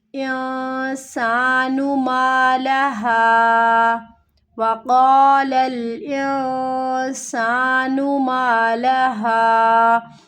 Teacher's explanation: وَقَالَ الْإِنسَانُ، پہ ہمیں کیا کرنا ہے، اخفا کرنا ہے، نون ساکن ہے، اگلا حرف حروف اخفا میں سے ہے تو یہاں پر ہمیں اخفا کرنا ہے، نون کی آواز کو چھپا کر پڑھنا ہے